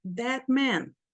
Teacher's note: As duas palavras são tônicas. That man. Eu não posso falar rápido aqui, that man, senão eu tiro o sentido.